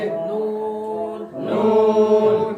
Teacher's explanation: জিহ্বার আগা তার বরাবর উপরে তালুর সঙ্গে লাগিয়ে তার বরাবর উপরে তালুর সঙ্গে লাগিয়ে নুন নুন 10 নাম্বার মাখরাজ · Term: 9 নাম্বার মাখরাজ